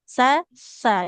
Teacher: Pindah ke sa ujung lidahnya menempel ke ujung gigi seri yang atas.